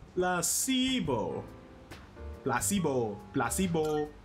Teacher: The stress is on the middle syllable.